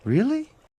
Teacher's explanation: The first example, Really? with rising intonation, can communicate genuine uncertainty, surprise, or a request for confirmation.